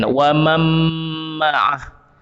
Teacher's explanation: nun sukun ataupun tanwin itu memang dia hilang 100%, betul? Dia hilang terus. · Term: dengung